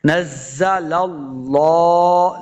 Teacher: لفظ اللہ کا لام جو ہے اس کو موٹا پڑھیں گے، پر پڑھیں گے، لام کو لام مشدد کے ساتھ ملا کے پڑھنا ہے۔